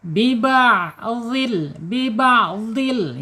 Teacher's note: Biba'dil ya biyafatain tuh dua bibir mahrajnya. Kemudian secara sifatnya ada di asyidah tertahan suara ketika ee disukunkan.